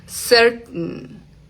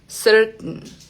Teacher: Miren que casi ni suena esa t. Se detiene acá en la garganta. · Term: glotal